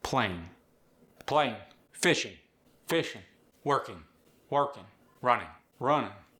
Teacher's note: dropping the G is very common with the Appalachian accent